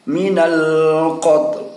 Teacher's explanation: Huruf lamnya atau huruf L-nya dalam bahasa Indonesia sudah membentuk di dalam rongga mulut kita, tetapi tidak diperdengarkan, sehingga seolah-olah yang terdengar adalah suara ta.